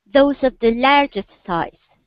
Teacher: say, those of the largest size. So give me an emphasis on largest